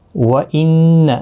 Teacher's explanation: نون مشدد پر غنہ ہوگا